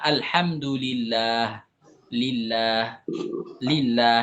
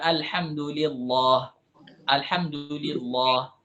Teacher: kalau lafzul jalalah lafaz Allah sebelumnya kasrah Maka nanti tidak menjadi Tebal lagi